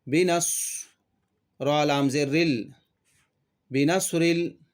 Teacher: نون ساکین کے بعد حروف اخفا میں سے صاد آئے تو نون کی آواز کو ناک میں چھپا کر پڑھنا چاہیے۔